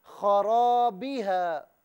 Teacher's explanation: را کو پر کر کے پڑھنا ہے، اس لیے کہ را پر زبر ہے